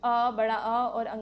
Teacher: खाली आपके कंठ से निकलती है आवाज तो इन्हें कंठ्य स्वर कहते हैं।